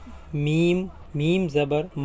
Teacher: میم یہ دونوں ہونٹوں کے تر حصے سے ادا ہوتا ہے، اس کی بھی سمپل ایم کی طرح آواز ہے، اسے میم میم زبر ما کرنا ہے.